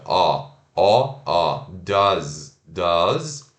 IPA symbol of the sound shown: ʌ